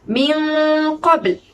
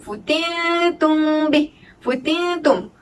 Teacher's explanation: Untuk memasuki kepada huruf qaf, okay, huruf nun itu perlu ditebalkan kerana huruf selepasnya ialah huruf isti'la.